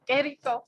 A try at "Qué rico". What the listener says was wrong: Qué rico. Come on, roll the R's. Qué rico. Or just say delicioso. You don't have to roll the R's.